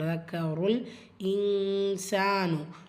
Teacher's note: லாம் சுக்கூன் தக்கருல் இன்சானு நூன் சுக்கூனுக்கு அப்புறமா சீன் வந்திருக்கு. எஃபாவுடைய சட்டம் நூனை பாதியாக மறைச்சி குன்னா செஞ்சு ஓதணும்.